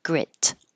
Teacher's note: hold your tongue in the T position and not release the air flow